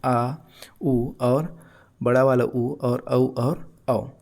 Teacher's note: जिन स्वरों के उच्चारण में जिह्वा का पिछला भाग उत्थापित होता है या सक्रिय रहता है उन्हें क्या कहते हैं, पश्च स्वर कहते हैं